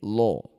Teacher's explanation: Maka lamnya baca dengan tafkhim atau dibaca dengan tebal.